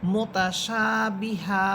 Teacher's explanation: আলিফ জবরশা মুতাশা বাের বি হা দুই জবর হান মুতাশাবিহান এখানে দুই জবরকে এক জবর বানিয়ে এক আলিফ টেনে পড়তে হবে